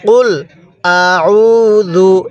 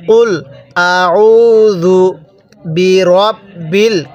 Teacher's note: জালটা নরম করে, জিম পড়বেন না